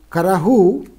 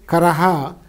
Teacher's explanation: Sound changes that are typical of Apabhramsha include the replacement of the vowel sound by U in final syllable